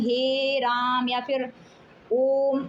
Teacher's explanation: इनके उच्चारण में 2 से अधिक मात्राओं का समय लगता है। जब किसी को दूर से पुकारते हैं तो अंतिम स्वर लंबा कर देते हैं ना, खींचकर। जैसे किसी को अगर बुलाते हैं हे राम या फिर ओम, ऐसे उच्चारण करते हैं तो हमें अधिक देर समय तक मात्राओं को खींचना पड़ता है, इसलिए इसको हम प्लुत स्वर कहते हैं।